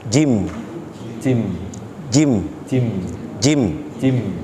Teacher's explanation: Bapak fokus kepada wastul lisan, tengah lidah ini ketemu dengan langit-langit mulut bagian atas. Ini tengah lidah ini bertemu dengan langit-langit mulut bagian atas.